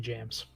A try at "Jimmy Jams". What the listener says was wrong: Jam. You say James? It sounds like you said James. Jimmy Jam. It sounds like you're saying James with an accent.